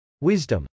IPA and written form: wˈɪzdəm (wisdom)